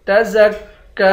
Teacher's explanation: تزکی، زا کو کاف کے ساتھ ملا کر کاف کو سختی کے ساتھ جمع کر پڑھیں گے، کاف کو ایک الف کی مقدار کھینچ کر بھی پڑھیں گے